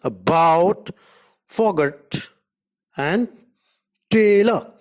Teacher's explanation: Now the shortest A. It is a central unrounded vowel just below half open. It can occur initially, medially, and finally in a word as in about, forgot, and tailor, respectively.